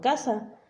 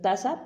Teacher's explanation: posterior o velar que es sustituido por un anterior labial o dental un ejemplo puede ser tasa por casa y tiende a desaparecer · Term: frontalizacion